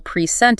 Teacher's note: If you stress the first syllable, P R E scent, it's a noun, a gift. If you stress the second syllable present, it's a verb